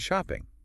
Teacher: and in shopping, the stress is on shop.